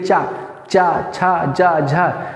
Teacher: तो चा छा बोल क्या हो रहा है कि हमारी जिह्वा ऊपर तालु से टच कर रही है, तो हम मान रहे हैं कि ये तालव्य वर्ण है